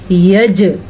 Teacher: جیم کے اوپر کلکلا ہو رہا ہے کیونکہ جیم ساکن میں ہے. جب جیم کے اوپر ساکن آ جائے یا قاف کے اوپر ساکن آ جائے یا دال یا با یا توا، یہ 5 حروف ہیں، جب ان کے اوپر ساکن آ جائے تو جھٹکا ہوتا ہے.